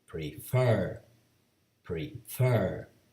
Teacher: Fer is the last syllable and is stressed, and is also CVC.